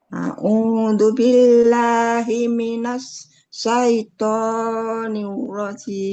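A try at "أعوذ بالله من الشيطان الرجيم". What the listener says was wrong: Nah, sama di sinnya Bu, sinnya himinash. A'udzu billahi minash. Nah, di dalam tuh ya.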